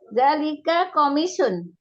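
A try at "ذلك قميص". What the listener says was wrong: Iya, komisun. Mimnya panjang kan, Eyang?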